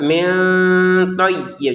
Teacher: Min nun sukun bertemu th ya dibaca dengan samar